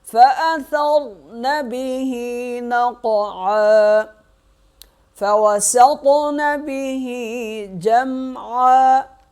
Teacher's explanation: قاف پہ کریں گے قلقلہ اور قاف کو موٹا بھی پڑھیں گے۔